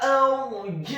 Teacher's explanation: huruf ra-nya dibaca sukun isti'la wa tafkhim, bergetar dan tebal